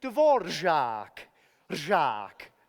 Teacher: the most distinctive sound in the Czech language is a combination of a trilled R, at the same time as the sound Z